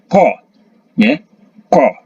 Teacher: Huruf qaf bunyinya keluar dari pangkal lidah, dekat dengan kerongkongan yang dihimpit ke langit-langit mulut bagian belakang. Jadi qaf, ya, ko, ya, ko, bagian belakang, ya, ko.